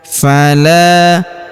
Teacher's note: huruf la kita panjangkan dua harakat karena terdapat alif di depannya